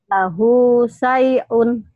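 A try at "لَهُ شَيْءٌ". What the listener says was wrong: Shinnya ya hutangnya. Syai'un. Lahu syai'un.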